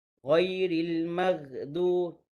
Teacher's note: huruf ghin tu dia ada sifat isti'la. isti'la tu maksudnya pangkal lidah naik ke atas.